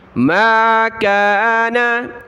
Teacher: ما كان لنبي أن يكون له أسرى، ما كان، میم الف زبر ما، کاف الف زبر کا، نون زبر نا، ما كان، میم کے ساتھ الف پلس سے اس کو کھینچیں گے ایک الف کی لمٹ میں